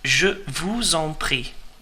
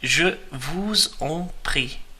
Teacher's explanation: we're merging the S and the E there from vous, the second word in, and on, the third word in, because the on starts with a vowel.